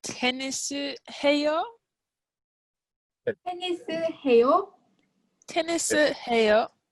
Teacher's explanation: if we want to turn this statement into a question, we do something that's similar to English. We add sort of a rising tone at the end